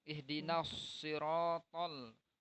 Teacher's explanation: To-nya lebih tebal daripada huruf ta.